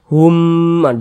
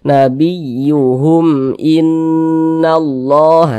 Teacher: Nah, ini huruf mim sukun, setelahnya huruf hamzah, bukan huruf ba, bukan huruf mim, berarti hukumnya izhar syafawi. Karena dia izhar maka dibaca jelas, tidak berdengung, baca pendek saja.